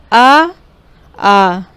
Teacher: बोलेंगे तो जैसे लगेगा कंठ से आवाज़ निकल रही, गले से। कंठ यानी कि गले से। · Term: कंठ स्वर